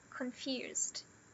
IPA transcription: kənˈfjuːzd